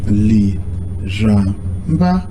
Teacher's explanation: the first I is falling and the second A is falling. The last A is rising.